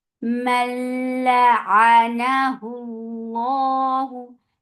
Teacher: la short, a from your throat, na light, and for fatha open your jaws, Allahu for the circle lips.